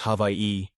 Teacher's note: The W and the A and the I merge. The W makes a V sound since it's surrounded by vowels.